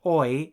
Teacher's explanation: the sound oi in boy and toy is a combination of the sounds o and E spoken very quickly